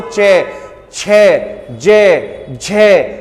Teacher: तो जब आप च का उच्चारण करते हो च, तो जो आपकी जीभ होती है ना, जीभ, तो जीभ का जो बीचला हिस्सा होगा वो मुंह के ऊपरी छत पे जो है स्पर्श करता है · जब आप चे का उच्चारण करोगे तो ये जो जीभ का बीच वाला हिस्सा होगा ये मुख की ऊपरी छत पे क्या करेगा? स्पर्श करेगा। और जो ऊपरी छत कहलाती है बेटा, यही जो है तालव्य कहलाती है।